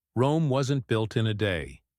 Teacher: Rome wasn't built in a day stress on Rome built day intonation The Voice slightly Rises on built and falls on day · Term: stress patterns